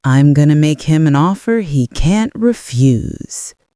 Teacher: Gonna shows casual speech. Note the contraction I'm and the rhythmic push on offer.